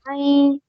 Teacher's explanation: Don't make ya sound. Just do na. Take the sound into your nose.